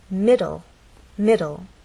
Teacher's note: against that bump we'll also look at words like middle middle this word has two syllables middle and the stress is actually on the first part · This word has two syllables, middle, and the stress is actually on the first part. It ends in an E, but the final sound is an L sound because the E is silent.